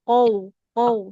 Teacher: Jadi seperti o ke u